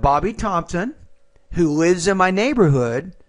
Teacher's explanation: you have to take the S and blend it with the I